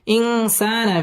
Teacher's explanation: সা মধ্যে তাবাই এক আলিফ টেনে পড়তে হবে